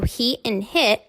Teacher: he and hit sound the same, except for the length.